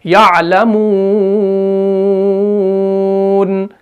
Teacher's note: तो हमने यहां पर वाव मद्दा को थोड़ा सा खींच कर पढ़ना है